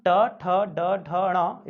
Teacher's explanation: तो जब हम ट, ठ, ड, ढ, ण इनको बोलते हैं तो जीभ तालु के आगे मूर्धा को स्पर्श करती है, इसलिए मूर्धन्य कहलाते हैं